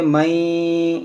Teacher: नून साकिन के बाद या है तो यहाँ पर इदगाम करेंगे, इसको पढ़ेंगे मई, यहाँ पर भी नाक में आवाज़ जाएगी।